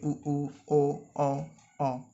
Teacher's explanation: first स्वर इस तरह से याद कर सकते हैं, जितने भी राउंडेड यानी जिसमें ओठ गोलाकार हो जाता है, जैसे कि उ ओ, इन सब में जो हमारे ओठ का आकार होगा वो गोल होगा